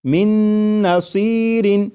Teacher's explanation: میم کے بعد نون مشدد جو ہے اس کی آواز آئے گی اور غنہ کے ساتھ پڑھیں گے